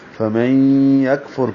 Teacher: میم کو نون سے نہیں ملائیں گے بلکہ یا سے ملائیں گے، نون ساکن کے بعد یا ہے تو ادغام ہوگا · فا کو را سے ملائیں گے، را کو پر پڑھیں گے